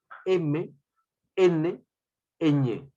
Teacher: estos sonidos se producen en la cavidad nasal ya no la cavidad bucal sino la cavidad no sangre nasal · el aire pasa por la vía nasal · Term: nasales